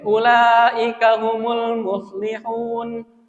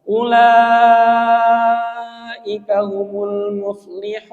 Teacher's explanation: Kalau ini kan mad wajib berarti harus tadi panjangnya adalah empat harakat atau lima harakat. Ulaika humul muflihun gitu.